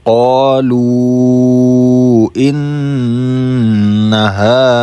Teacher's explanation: ان میں تھوڑا گنہ کر لیں گے کیونکہ نون پر تشدید ہے. اب جب نون اور میم پر تشدید ہو تو وہاں تھوڑا گنہ کر لیتے ہیں.